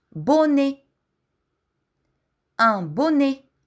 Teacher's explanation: Un bonnet изговаряме отворено Е в края.